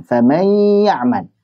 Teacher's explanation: Nunnya masuk ke ya, tapi tidak sempurna. Masih bawa-bawa sifat gunnah daripada huruf nun. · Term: idgham naqis